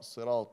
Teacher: لا تقل الصراط تاء، خليها طاء